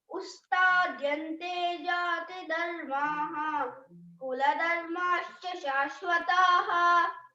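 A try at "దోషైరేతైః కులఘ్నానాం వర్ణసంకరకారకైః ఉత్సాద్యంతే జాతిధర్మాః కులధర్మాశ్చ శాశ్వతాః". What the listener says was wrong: వెరీ good, బాగా చెప్పావు. ఇప్పుడు బాగా కరెక్ట్ చెప్పినావు.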